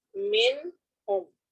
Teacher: ہم یہاں پر من ہم نون کو واضح کر کے پڑھیں گے چونکہ یہاں اظہار ہو رہا ہے